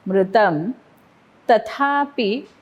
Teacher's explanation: पी वरती आघात कारण पुढे जोडाक्षर.